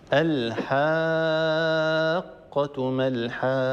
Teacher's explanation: هذا مد لازم يمد بمقدار 6 حركات